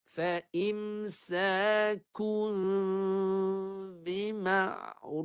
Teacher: Lepas tu bibir jangan rapat sangat supaya bunyi mimnya kelihatan samar-samar.